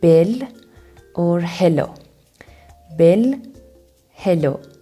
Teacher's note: L's are pronounced at the front of your mouth